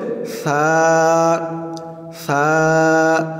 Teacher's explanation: সা, সা বলার সময় আওয়াজটাকে একদম পাতলা করতে হবে। জিহ্বার মাথা উপরের দাঁতের মাথার সাথে লাগবে।